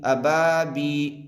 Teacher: जैसे बा अलिफ ज़बर बा, अबा, बा या ज़ेर बी, यहाँ पर याए मद्दा होगा इसलिए कि याए साकिन से पहले ज़ेर है। याए मद्दा को एक अलिफ के बराबर खींच कर पढ़ें, मारूफ पढ़ें, मजहूल आवाज़ से बचें।